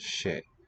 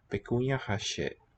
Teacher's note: And I think just the she. fricative, not a ch affricate, but she.